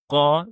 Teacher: Yəni qa şəklində tələffüz edirik. Dilimizin daha doğrusu son hissəsi ilə boğaza bitişən hissəsindən tələffüz edirik · Qaf hərfi də Azərbaycan dilindəki q səsindən fərqlənir. Biz qaf hərfini boğazımızın ortasından tələffüz edirik. Yəni, qa şəklində tələffüz edirik.